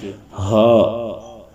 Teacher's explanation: واو کے بعد جو ہا آ رہا ہے اس کو اپنے بڑے حلق سے ادا کرنا ہے، تھوڑا سا بھاری کر کے